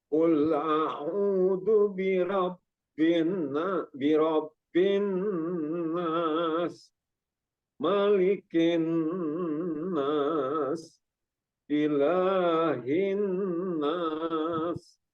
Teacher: jadi di gunnah dengungnya karena tasdid khusus mim dan nun